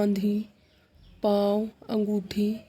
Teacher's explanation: मुंह से और नाक से दोनों से हवा निकल रही है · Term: अनुनासिक